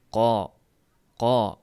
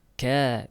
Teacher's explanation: Qof harfida misol uchun qo deganda tovush yuqoriga uriladi. Ka deganda esa tovush tashqariga chiqishga harakat qiladi.